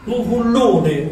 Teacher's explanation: noi a Nicastro usiamo la F aspirata